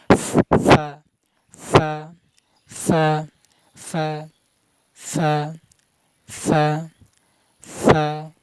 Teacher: মানে নিচের ঠুটের পেট নিচের ঠুটের মধ্যখান মানে পেট পেটের সাথে উপরে দুই দাত নিচের ঠুটের পেটের সাথে লাগি উচ্চারণ করবেন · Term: ফা হরফ